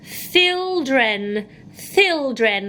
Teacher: Thildren, thildren, with my tongue poking out. So not children, but thildren.